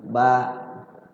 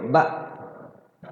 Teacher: Ba itu kalau kita baca di ayun jadi panjang. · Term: matobi